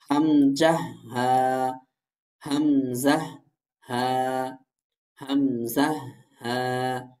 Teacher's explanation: হলকের শুরু হতে হামজা হা উচ্চারিত হয়